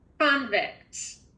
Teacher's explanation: we've accented the first syllable, so I need to hear accent, your mouth being open wider